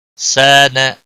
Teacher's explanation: الف مدہ ہے، 1 الف کے برابر کھینچ کر پڑھیں گے، نا کو کھینچنا نہیں